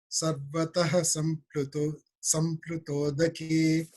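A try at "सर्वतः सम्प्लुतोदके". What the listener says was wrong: Yeah, you can say sarvataha, and when you say these words together, you have to say sarvatas samplutodake. So that S becomes, it's like a double S there. The Visarga becomes an S there.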